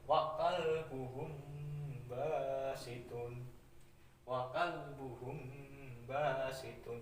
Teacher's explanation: Huruf ikfa safawi itu cuma satu, yaitu b ya. Jadi ketika ada huruf mim mati bertemu dengan b itu dibaca samar-samar ya, dan disertai dengan dengung. Jadi samar dan dengung ya, mendengung.